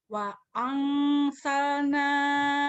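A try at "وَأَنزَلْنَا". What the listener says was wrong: Wangsal, jangan wangsal, bukan S terus Z. Wangzal.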